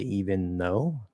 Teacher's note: in that specific case where it's it's N to th you can actually drop even the dental D and just release a dental N.